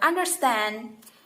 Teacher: the stress is on the last syllable of word